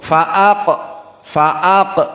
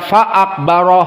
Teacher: faak tahu faak maka ada dua harakat Fa aqbaroh perlu diperhatikan qof di sini Sakinah Qalqalah sugro